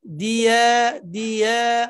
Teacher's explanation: ইয়াটা জিহ্বার মাঝখান থেকে সুন্দর করে ইয়া উচ্চারণ করার সাথে সাথে মুখটাকে, ঠোঁটটাকে স্বাভাবিক করা।